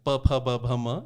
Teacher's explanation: प फ ब भ म, इन सब में होंठ छू रहे हैं आपके। तो इसलिए आप क्रम देखें, सारे जहां जहां उच्चारण स्थान है उसके अनुसार क्रम है वर्णमाला का।